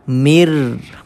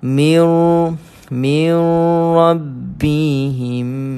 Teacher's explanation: Sebab itulah kita hanya dengar mir. So mir ini idgham sahaja, memasukkan sahaja, tapi tidak dengungkan bacaan mir rabbihim.